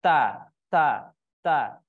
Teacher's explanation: huruf ta ini ada sifat syiddah di situ, kuatnya pada tumpuan huruf, dan ada sifat hamas di situ, mengalirnya nafas kita